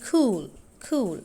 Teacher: Retracted k or k means tongue is pulled backward.